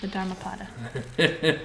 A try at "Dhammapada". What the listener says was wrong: The Dhammapada. Dhammapada. No, Dhamma is how it was written in Pali, which is the language that Buddha spoke.